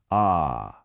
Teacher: It's an open clear resonant vowel. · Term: simple final